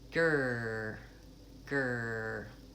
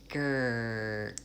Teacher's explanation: my tongue is back it's bunched and it's braced against my teeth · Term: back R